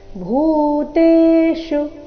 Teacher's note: ಭೂ ಇಲ್ಲಿ ಮಹಾಪ್ರಾಣ ದೀರ್ಘ